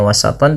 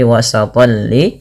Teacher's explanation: dimasukkan kepada huruf lam tanwinnya, bukan lagi hanya wasatan tapi wasatan li. Ini kita hukumi dengan bacaan yang dinamakan dengan idgham bila gunnah.